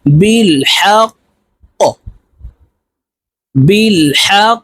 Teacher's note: কফ যেহেতু কলকলার হরফ, উপরের দিকে ধাবিত করে ধাক্কা দিয়ে উচ্চারণ করব · কফকে ওয়াকফের ক্ষেত্রে সাকিন করে ফেলবো । কফ যেহেতু কলকলার হরফ, উপরের দিকে ধাবিত করে ধাক্কা দিয়ে